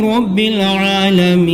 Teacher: عالمینہ ہے مگر نون کو ساکن کر دے رہے ہیں